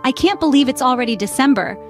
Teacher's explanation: the pitch Rises on can't believe and falls on December